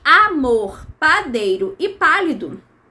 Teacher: nas palavras amor, padeiro e pálido, nós temos ali mor, dei e pá como sílabas mais fortes, mas apenas pá de pálido recebe acento.